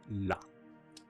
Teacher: Lateral approximants are again like approximants, but the airflow is along the sides of the tongue. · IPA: /la/